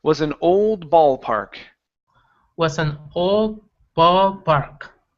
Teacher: instead of bowl, ball. Open the mouth up some more.